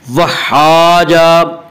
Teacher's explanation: وحاجہ الف مدہ، الف ہمیشہ مدہ ہوتا ہے اور الف سے پہلے زبر ہوتا ہے، الف مدہ کو ایک الف کے برابر کھینچ کر پڑھتے ہیں